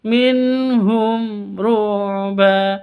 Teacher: mim mati bertemu dengan ro, sama jelas juga karena izhar safawi. · Nun sukun bertemu dengan ha, nun mati bertemu dengan ha, bacanya jelas. Harus jelas, tidak didengungkan, tidak disamarkan karena izhar halqi.